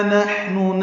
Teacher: نحن میں ہا ساکن ہے، اس میں ہمس ہے